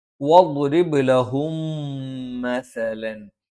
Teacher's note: ലഹും സുക്കൂനുള്ള മീമിന് ശേഷം മാ വന്നു. അവിടെ ഇദ്ഗാം മണിച്ചുച്ചരിക്കണം.